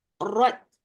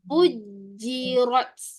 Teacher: Dia ada sedikit angin yang dilepaskan untuk huruf ta. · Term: lepas angin